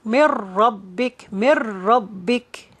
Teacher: We're not going to say min. We say mir because we're going to merge the noon to the ra. But there is no gunna. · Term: idgham without gunna